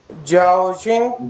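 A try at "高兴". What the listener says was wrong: जाओ नहीं, गाओ, गाफ अलीफ गा, गाओ शिंग।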